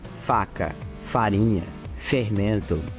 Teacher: é uma fricativa lábio dental surda · fricativa lábio dental surda quer dizer que não tem voz então é só meu dente de cima que é o dente né no meu lábio de baixo · Então quer dizer que esse shinshi, quando a gente traduz para português, ficaria tipo assim, lábio dental. Quer dizer que o lábio, ele vai ser triscado pelos nossos dentes de cima.